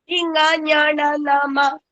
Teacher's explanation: മൂക്കിന്റെ സഹായത്തോടു കൂടി നമ്മൾ പറയുന്നത് കൊണ്ട് തന്നെ അതിനെ അനുനാസികങ്ങൾ എന്നും ശിഥില വർണ്ണങ്ങൾ എന്നുമാണ് പറയുന്നത്